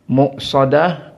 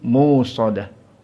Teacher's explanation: Maka di ayat yang ke-8 ibdal hamzah bil wawi. Maka muqsadah di qiraah Hafs dengan hamzah, maka di sini dengan waw. Musadah, sehingga ada mad tabi'i.